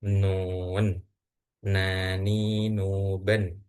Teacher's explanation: Ujung lidah menempel pada dua gigi seri bagian atas.